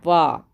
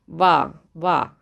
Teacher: और ओस्ट से बोला जाता है आप बोल के देखें वा आपका दांत जो है ऊपर का नीचे के ओस्ट से टकरा रहा है